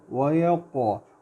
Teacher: قاف کے اوپر جزم ہے لیکن قلقلہ کریں گے، اس کو باؤنس کریں گے